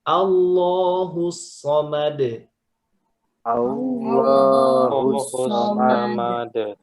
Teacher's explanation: Lam itu sebenarnya aslinya tipis, kecuali di lafadz Allah dia tebal kalau sebelumnya fathah dan dhammah. Nah, ini sebelumnya fathah, maka dibaca Allah. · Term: lam yang tebal